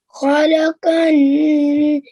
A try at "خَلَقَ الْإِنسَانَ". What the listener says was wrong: Okay, so just bear in mind, don't hold on to the letters that we don't hold on to. So this sakin lam here is only for 1 second. خلق الإنسان.